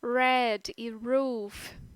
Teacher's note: na variedade rótica, a gente deve pronunciar o R como R retroflexo